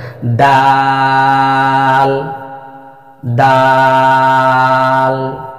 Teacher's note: জিহ্বার আগা সামনের উপরের 2 দাঁতের গোড়ার সঙ্গে লাগিয়ে পাতলা আওয়াজে 4 আলিফ পরিমাণ টেনে উচ্চারণ করতে হবে। দাল দাল। শেষে গিয়ে জিহ্বার আগাটা তালুতে লাগবে দাল।